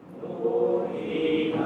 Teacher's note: Nu panjang dua, hi panjang dua. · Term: mad thobi'i